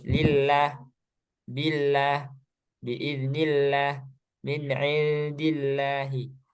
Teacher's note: Nah, ini lafaz jalal Allahnya dibaca tipis atau tarkik gitu ya.